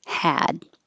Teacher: the vowel before a voiced sound is voiced so the ah will be a little longer